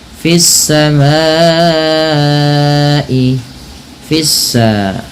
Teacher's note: panjangkan bunyi ma karena ia dihukumi dengan bacaan mad wajib muttasil terjadi Sebab karena adanya Hamzah yang datang setelah huruf mad berupa